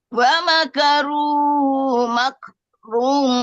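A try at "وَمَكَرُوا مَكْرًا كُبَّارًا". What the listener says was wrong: Makran bukan makrun, makran.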